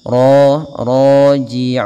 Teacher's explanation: Ra-nya tebal dengan dia sifat tafkhimnya